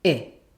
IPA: ɪ